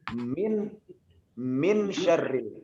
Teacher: Inilah disebut dengan ikhfa. Jadi melebur antara nun dengan shin.